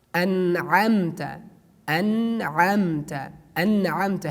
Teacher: An'amta. Here we pronounce the letter noon frankly because we have after noon ain letter.